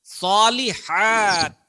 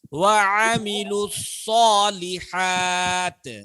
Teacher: ہاں حلق سے نکلے گا، اور صاد کو موٹا ادا کریں